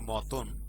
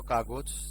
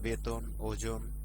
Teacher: মধ্য অ এর আগে যদি অ, আ, এ এবং ওকার থাকে তবে সেই মধ্য অ এর উচ্চারণ ওকার হয়